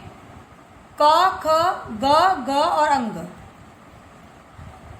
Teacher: कंठ द्वारा गले से बोला जाने वाला वो कंठस्थ है